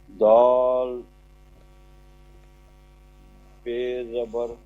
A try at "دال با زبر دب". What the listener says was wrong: بے نہیں بھائی جان, با بولیں, دال با زبر دب.